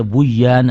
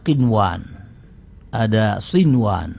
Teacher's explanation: untuk tidak boleh dibaca dengan Idam tapi dibaca dengan zhar sehingga nunnya akan dibaca dengan jelas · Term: izhar